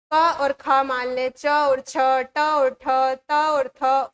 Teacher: इसमें नाद नहीं होती। कोई गूंज नहीं होती। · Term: अघोष व्यंजन